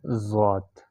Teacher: ضاد کا مخرج ہے دائیں سائڈ پہ نچلے والے دانت اور زبان کا کنارہ، یہ جب دانتوں کے ساتھ لگتے ہیں تو یہاں سے ضاد ادا ہوتا ہے، ٹھیک ہے۔